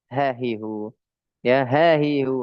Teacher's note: sifatnya adalah yang pertama sifat hams yang kedua sifatnya rakhawah yang Ketiga dia istifal, infitah, dan ismat.